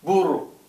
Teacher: Again, it's got a trilled R in it.